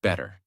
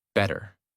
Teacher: In the first version, your mouth stops more. In the second version, the sound flows more smoothly. That smoothness is the American feeling. · the mouth does not stop strongly on the T. The tongue touches quickly and moves on. That is why it sounds softer.